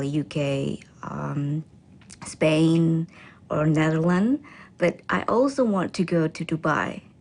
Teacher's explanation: She then lists the countries with her voice pitch rising until she ends with a level voice for Dubai.